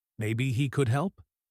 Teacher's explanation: Maybe he could help, because he is not sure. The pitch goes up at the end because it is a suggestion, a question to the group. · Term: little rise in pitch